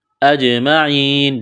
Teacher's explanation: جیم ساکن ہے قلقلہ کریں گے جیم پر